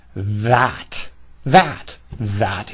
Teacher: the tongue pushed out beyond the front teeth under the teeth vibrating